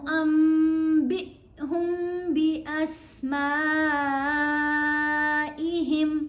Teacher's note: یہاں نون نہیں پڑھا گیا، نون کی آواز کو میم میں بدل لیا. ابھی میں نے پہلے بتایا یہ قلب ہوتا ہے اور دوسرا یہ با کے نیچے زیر ہے، اس کے بعد حمزہ ہے تو با کو ہم نے حمزہ سے ملا کے پڑھنے، با تھوڑا سا جھٹکے سے پڑھا جائے گا.